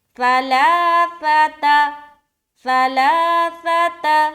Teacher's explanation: لام ایک صرف کھینچ رہے، باقی کہیں نہیں کھینچنا